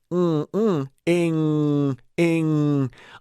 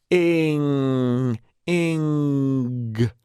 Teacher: I'm directing air from maybe primarily out my mouth to through my nose. So it becomes hypernasal. Ing, ing. And as I introduce the g sound, I create this a little bit of back pressure.